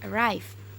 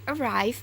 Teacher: But the word arrive has 6 letters or sounds, and the sound r in the word arrive is voiced palato-alveolar approximant